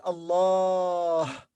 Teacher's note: as you may notice here there is alif we pronounce alif long vowel in the middle